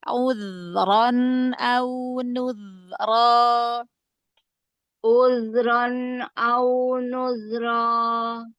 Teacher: Zal keluarkan ujung lidah, jangan ada kolkolah, dialirkan rokhwah suaranya. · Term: rakhwah